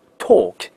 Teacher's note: 嘴巴是非常非常的撅起来啊，往外撅的